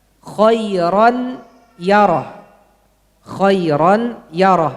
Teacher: Ya pertama ada gunnahnya. Ya kedua tidak ada.